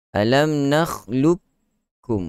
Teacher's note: masuk terus kamil, masuk terus ke dalam huruf kaf tanpa ada huruf qaf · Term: idgham secara kamil